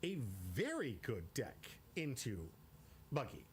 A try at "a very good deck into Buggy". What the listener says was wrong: You put too much emphasis on the very good deck.